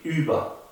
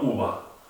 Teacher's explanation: ponemos la boca como una U y pronunciamos una I. Über, no uva.